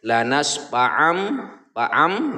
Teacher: Nah ya, jadi di mim, ke mim bunyi tanwinnya yang tadinya an ya, akhirannya adalah akhiran huruf n. Karena di sini tanwinnya atau di sini fathatain bertemu dengan huruf ba, maka bunyi n ini kita ganti ke mim. Kita tukar bunyinya ke mim gitu ya. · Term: iqlab